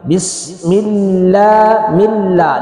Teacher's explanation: لام سے پہلے زیر ہے اس وجہ سے اس لام کو باریک پڑھا جائے گا